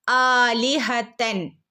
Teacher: ആന്റെ കൂടെ അലിഫ് മദ്് വന്നിട്ടുണ്ട് ല്ലേ അപ്പോ രണ്ടനക്ക നീട്ടി കൊടുക്കുട്ടോ